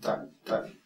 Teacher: ത, ഇങ്ങനെ, അങ്ങനെ ഒരു നാവിന്റെ അറ്റം മുകളിലത്തെ പല്ലിന്റെ അറ്റത്ത് വെച്ചുകൊണ്ട് ത ത അങ്ങനെ പറയണം. പല്ലിന്റെ അറ്റമല്ല, അകത്ത് പല്ലിന്റെ പിറകിൽ നിന്ന് നാവ് അവിടെ പ്രസ് ചെയ്തുകൊണ്ട് ഉച്ചരിക്കുകയാണ്.